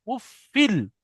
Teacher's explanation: এই তানবিনকে লামের সাথে মিলিয়ে বিনা গুণনায় তাড়াতাড়ি পড়তে হবে, মানে এই তানবিনটা লামের সাথে মেলাতে হবে, একটা আরেকটার ভিতরে ঢুকে যাবে, ফাটা লামের ভিতরে ঢুকে যাবে, তাহলে ফা লাম দুজের ফিল, উফ ফিল।